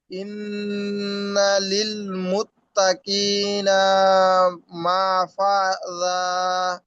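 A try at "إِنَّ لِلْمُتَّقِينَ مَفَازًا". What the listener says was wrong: হ্যাঁ, মুত্তাকি না, না কয় টান।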